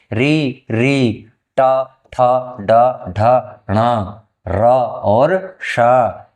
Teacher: और ष इन सभी वर्णों का उच्चारण मूर्धा के स्थान पर मूर्धा के स्थान पर जिव्या लगने से होता है